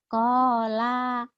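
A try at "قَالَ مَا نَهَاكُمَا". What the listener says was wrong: Lanya pendek.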